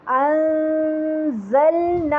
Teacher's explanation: تو وہاں سے جب ہم وہیں پہ زبان رکھ لیں گے اور پھر نون کا اکفا کریں گے. انزلنا، کوشش کریں گے کہ زا کی آواز بہت زیادہ بزنگ ساؤنڈ کے ساتھ واضح سنائی دے